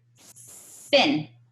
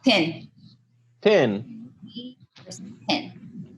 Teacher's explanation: the shorter high front vowel I would use fin.